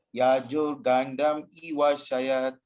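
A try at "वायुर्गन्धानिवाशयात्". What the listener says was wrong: It's not Yajur, it's Vayur. Yeah, Vayur Gandam Ivasayat.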